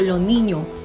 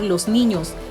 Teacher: no pronunciaba la s al final de las palabras en plural